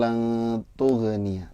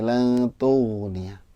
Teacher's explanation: Jadi jangan mantul lantughniya, tapi lantughniya. Ya, ghain itu punya sifat rokhawah. Jadi mengalir, jangan sampai mantul ya nggak punya sifat qalqalah.